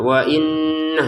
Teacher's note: wa inna kita dengungkan dua harokat ya.